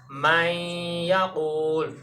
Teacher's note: نون کی صفت غنہ کو باقی رکھ کے ادغام کریں گے واو اور یا میں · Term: ادغام میں ناقص